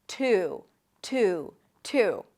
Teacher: Now you can also drop the Y sound. And then just connect the T to the U.